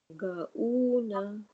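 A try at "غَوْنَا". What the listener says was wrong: Not ga. Gha. Ghauna. Ghauna. Not una. Woo. Woo. Like a W. W. O. O. Woo. Ghauna. Not ga. This is gha. Gha. Gha. From your throat, upper throat. Wuna. Wuna. This is wow. Wuna. W.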